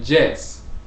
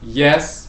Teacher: some people speaking in english would say jess with a j they interchanged the j and the y